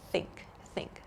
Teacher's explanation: we have an unvoiced th sound like in think think so in the word think I'm not using my vocal